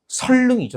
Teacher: 니은, 리을 만났을 때 앞에 니은을 뭐로 발음한다고 나와 있어요? 리을로 발음한다고 나와 있으니까